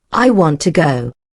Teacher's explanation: You'll hear the stress on want and to becomes almost invisible.